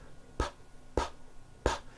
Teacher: your vocal cords are not producing a sound